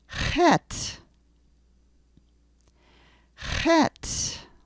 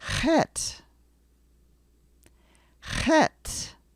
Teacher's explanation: Now in English, we tend to put our tongue up to the top of the roof of our mouth. In Hebrew, you're going to have to get the tongue coming farther back, and the sound is actually made in the beginning of the throat. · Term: guttural sound